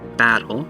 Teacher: here you can have stress on the first syllable so battle the ba is stressed here it's the hard syllable